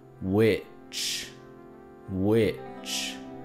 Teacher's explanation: which tiene el sonido ascendente y descendente del tono